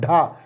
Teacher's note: जीभ पहले ऊपर उठ करके, पहले ऊपर उठेगी और किसे टच करेगी, मूर्धा, मूर्धा को स्पर्श करके फिर झटके के साथ नीचे आएगी। कैसे आएगी, झटके के साथ, ढा ऐसे।